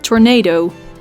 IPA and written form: tɔr'naː.do: (Tornado)